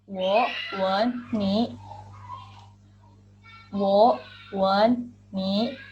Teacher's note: pada contoh yang kedua, wen menggunakan nada ketiga yang artinya adalah mencium.